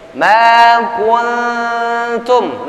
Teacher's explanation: nun mati bertemu dengan huruf ta, ikhfa